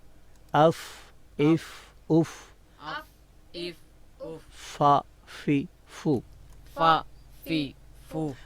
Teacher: نیچے والے ہونٹ کے جو ہے وہ اندرونی جو حصہ ہے تری والا ہے اس سے ہم ثنائے اولیہ کے کنارے کو ٹکرائیں گے, ملائیں گے تو حرف فا ادا ہوگا.